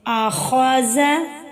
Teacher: حمزہ زبر آ، خا زبر خا، آخا، ذال زبر ذا، آخازہ۔ آخازہ میں خا کو ہم موٹا کر کے پڑھیں گے کیونکہ یہ حروف مستعلیہ میں سے ہے